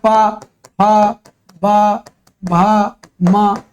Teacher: प ब भ म ये सब काहे से ये ओष्ठ से बोले जाते हैं